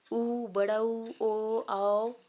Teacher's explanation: यह सब बोलने से होठ जो है गोल आकार का बन जाता है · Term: वृत्त मुखी स्वर, वृत्तमुखी स्वर